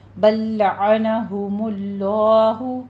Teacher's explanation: بل لعنہم اللہ، اس کو بل لمبا نہیں کھینچنا، بس صرف ادغام کرنا ہے لام کلام میں. بل لعنہم اللہ، ہم اللہ ضمہ ہے، ہونٹوں کو گول کیجیے، آگے لفظ جلالہ ہے اس کو پر پڑھنا ہے کیونکہ اس سے پیچھے ضمہ آ رہی ہے. · ہم اللہ ضمہ ہے، ہونٹوں کو گول کیجیے، آگے لفظ جلالہ ہے اس کو پر پڑھنا ہے کیونکہ اس سے پیچھے ضمہ آ رہی ہے. بکفرہم میں را ہماری جو ہے وہ باریک پڑی جائے گی، یہاں پہ را باریک ہو جائے گی.